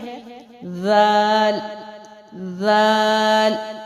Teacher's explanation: دال کو ادائیگی کے وقت آپ کی زبان کی نوک کو اوپر کے سامنے والے 2 دانتوں کے اندرونی کنارے سے لگا کر باریک آواز میں پڑھنا ہے